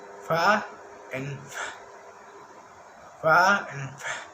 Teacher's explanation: Consonant sound which are produced by contacting the lower lip and upper teeth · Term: labidental sound